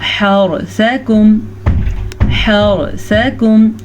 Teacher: हरसकुम, हरसकुम, रॉ साकिन से पीछे वाले लफ्ज़ पे ज़बर तो रॉ पुर पढ़ेंगे, सा को लंबा नहीं करेंगे, हा को लंबा नहीं करेंगे क्योंकि इनके ऊपर ज़बर है।